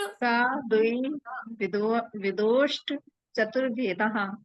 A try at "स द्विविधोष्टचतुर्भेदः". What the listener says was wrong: हाँ, उसमें ब्रेक कहाँ लेना है? स के बाद ब्रेक ले सकते हो आप, उसके बाद ब्रेक नहीं ले सकते क्योंकि उसके बाद पूरा है। स द्विविधोष्ट ऐसे बोलकर प्रैक्टिस करके पूरा आ जाएगा।